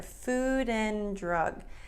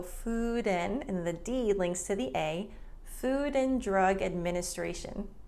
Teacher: The D in and is dropped. So food and the D links to the A, Food and Drug Administration, FDA. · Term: reduction